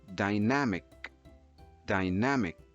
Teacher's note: Pronounce the word by putting emphasis on the first syllable